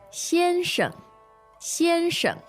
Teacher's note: that's first tone neutral tone